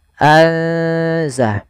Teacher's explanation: ikhfa di antara keduanya sehingga nunnya samarkan ke zai.